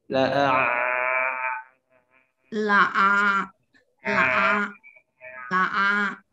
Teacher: Ain itu bisa dipanjangin Bu, bunyi ain itu dia bisa dipanjangin bunyi sukunnya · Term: ain sukun